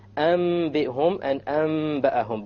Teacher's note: You convert the noon to the meme with a ghunna. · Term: iqlab